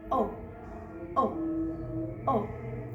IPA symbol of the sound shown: ɒ